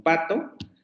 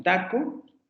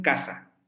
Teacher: Tenemos las oclusivas sordas, la bilabial como en pato, la dental como en taco y la velar como en casa